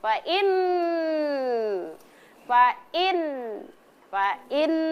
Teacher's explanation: Jadi didengungkan selama dua harakat. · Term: Nun tasdid